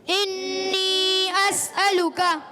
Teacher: انی میں نون مشدد بھی ہے، نون کی ادائیگی یا مدہ ایک الف کھینچنا ہے